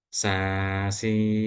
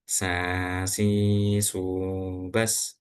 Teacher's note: Yang salah sasubas. Nah, ketika udara itu keluar lewat hidung ketika huruf sin maka suaranya kan berubah